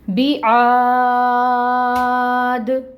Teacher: جو الف مد ہے اس کو اب وقف کی صورت میں ہم 6 کاؤنٹس لمبا کریں گے